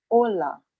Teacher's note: ola begins with h however the h is going to be silent so you would only be hearing from the second letter right